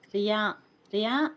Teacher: రియా అని పలికేటప్పుడు నాలుక కొంచెం పైకి రోల్ అవ్వాలన్నమాట, అంటే రియా అనేసి అని చెప్పేసి రాకు యావత్తు వస్తుంది.